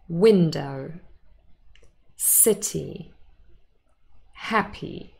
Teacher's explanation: hopefully it was pretty clear that the first syllable is stressed